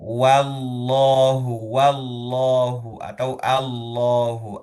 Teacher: Lafaz jalalah yang lafaz jalalah itu tebal karena pengaruh fathah dari huruf sebelumnya yaitu huruf wawu. Huruf wau fathah sendiri tipis tetapi lafaz jalannya tebal.